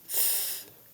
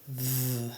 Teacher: So your voice is off for one, your voice is on for the other. So th is unvoiced and th is voiced.